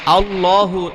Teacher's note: মোটা করে পড়তে হবে। কেন? কারণ ডাইনে জবর আছে